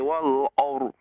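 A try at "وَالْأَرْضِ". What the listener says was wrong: Wal ar. Jangan o, wal ar.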